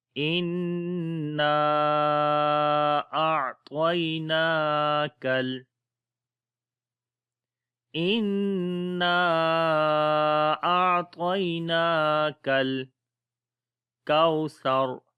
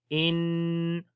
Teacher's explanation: کوثر، تو یہاں پر حمزہ کو نون کے ساتھ ملائیں گے، ان نون کے اوپر شد ہے، غنہ کریں گے، آواز کو ناک میں لے کے جائیں گے